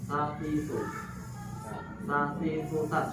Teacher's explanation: jadi menempel ujung lidah dan ujung gigi seri. Jadi dia soft ya sifatnya ya.